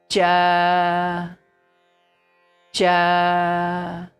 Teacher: The tongue, if this is our tongue, if this is the tongue and this is the upper line of oral cavity, then the tongue is touching when we pronounce cha, then the, okay, you say it, cha, cha. When we pronounce cha, the tongue is touching the upper back teeth and the palate. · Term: palatals